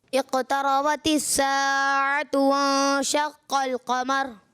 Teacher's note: बस ये कि रा को आखिर में पुर नहीं किया